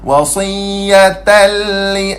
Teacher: tanwin bertemu dengan huruf lam. Apa hukum dia pula? Idgham bila gunnah. Masuk tanpa dengung.